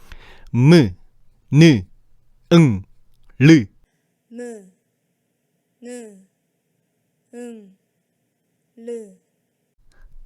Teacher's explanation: 발음할 때 성대가 울리는 유성음 즉 울림소리네 개와 성대가 울리지 않는 무성음 즉 안 올림 소리 15개가 바로 그거야. · 모음처럼 성대가 울리는 것들이 있는데 그게 바로 미음 니은 이응 응리을이야